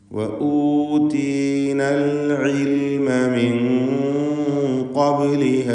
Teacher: സാക്കിനത്ത് നൂനിനെ മണിച്ചുകൊണ്ട് ഉച്ചരിക്കണം. ഇഖ്ഫാ ഹഖീഖി എന്ന നിയമം നൽകി.